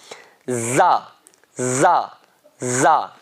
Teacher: زبان کی نوک اوپر والے اور نیچے والے دانتوں کے کنارے لگائیں، یعنی جو دانتوں، جب دانت آپ بند کرتے ہیں تو اس میں جو دانتوں کے کنارے آپس میں ملتے ہیں نا، وہاں پر بیچ میں آپ کو زبان کو لگانا ہے، سختی سے نکالنا ہے.